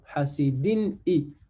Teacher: In, ça se termine toujours par un nun sukun. Lorsque le nun sukun rencontre une lettre de la gorge, donc ici, en l'occurrence, un hamza, on fait l'idhar, on prononce clairement hasidin i.